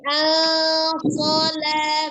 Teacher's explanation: dibaca dengan samar dengan sedikit berdengung, ditahan 2 sampai 3 harokat ya. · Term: ikhfa